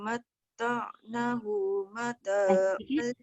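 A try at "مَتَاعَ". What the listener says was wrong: Na panjang sikit.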